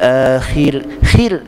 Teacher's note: Sebab huruf tu sebelum tu huruf berbaris di bawah, baris kasrah. Kha kasrah, ra sukun. Khir nipiskan roh.